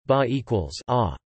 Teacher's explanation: The Huyen tone starts low mid and falls 21. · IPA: [ɓa˨˩]